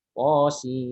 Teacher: Sin di situ dibaca 6 harokat ya